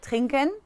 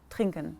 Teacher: en el alemán hablado, a veces esa E que va al último es casi que no se pronuncia